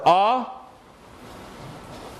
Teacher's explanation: For o, your tongue moves back, you round the lips.